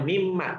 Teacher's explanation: Kalau nun mati bertemu dengan mim, maka huruf nunnya itu bunyi nunnya masuk ke bunyi mim. Namanya idgham biguna.